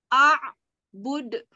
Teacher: Itu adalah bacaan qalqalah kubra, di mana pantulannya lebih keras.